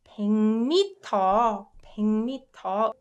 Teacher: uk softens to ung as soon as it meets m sound.